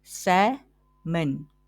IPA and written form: ˈsæm.ən (Salmon)